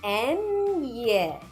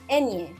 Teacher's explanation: Start by saying the letter N, but get ready to move to the next step quickly. Then add a Y sound. Ñ. It's like saying ñ, but faster, so ñ, ñ.